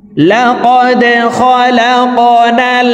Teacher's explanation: ডাল কলকলার হরফ, এখানে কফ কলকলার হরফ। ডালকে নিচের দিকে ধাবিত করে উচ্চারণ করব, এই কফকে উপরের দিকে ধাবিত করে ধাক্কা দিয়ে উচ্চারণ করব